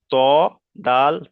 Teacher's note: জিভের আগা এবং সামনের উপরের দুই দাঁতের গলার সাথে লাগিয়ে উচ্চারিত হয়। এই জিভের আগাটা, উপরের যে সামনে দুটো দাঁত আছে, এই দুটো দাঁত, এই দাঁতের যে দাঁতের গলা মানে মাড়ির শুরু থেকে এখানে লাগিয়ে উচ্চারিত হয় ত, দাল, তা।